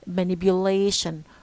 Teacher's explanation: lay is the stress syllable, and it carries the strongest stress, the primary stress.